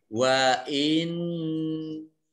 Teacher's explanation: nunnya tasdid dibaca gunnah, mendengung, ditekan 2 harokat.